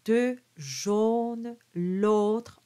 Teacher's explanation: Now the jaune is a closed O.